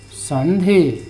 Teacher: इस अनुस्वार जो है इसका उच्चारण क्या होगा, ये न होगा, आधा न, संधि, यानी कि स्वर रहित न।